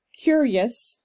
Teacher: Curious, I'm pronouncing that as 2 syllables.